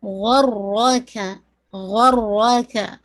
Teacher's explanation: غائن بھی ہیوی، را بھی ہیوی